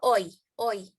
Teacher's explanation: From a low back to a high front position for oi